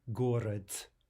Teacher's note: that final de should be pronounced here like a te, like a t